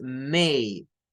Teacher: un diptongo que es el sonido Hey de la e con la i como la e con la i d d luego tenemos otro